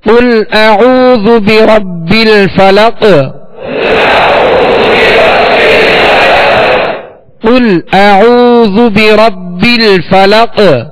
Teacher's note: اس پر قلقلہ ہوگا، یعنی آواز میں جنبش ہوگی، آواز لوٹتی ہوئی آئے گی · با کو جمع اور مضبوطی کے ساتھ ادا کریں گے، دوہرا پڑھیں گے اس لیے کہ با پر شد ہے، یہ مشدد حرف ہے.